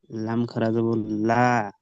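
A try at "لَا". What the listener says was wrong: এই, টান দিয়ে একালি পরে লা।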